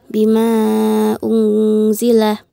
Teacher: nun sukun bertemu dengan huruf za dibaca samar-samar dan dihukumi ikhfa hakiki